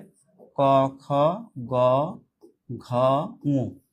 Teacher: সেটা হচ্ছে ক, খ, গ, ঘ, ঙ। এই পাঁচটা হচ্ছে মূলত জিহ্বামূলীয় ধ্বনি